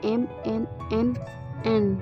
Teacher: bunyi bahasa yang arusnya udaranya keluar dari hidung disebut bunyi sengau nasal